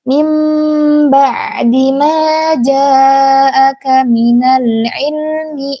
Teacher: iqlab itu mengganti huruf ba menjadi huruf mim seperti huruf mim setengah